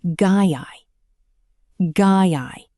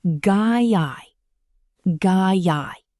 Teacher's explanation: They link together perfectly with a tiny Y sound in the middle.